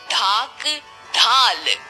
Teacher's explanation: ढ भी मूर्धन्य ध्वनि है। इसका उच्चारण अंदर से आती वायु द्वारा जीभ की नोक से मूर्धा को छूते हुए होता है।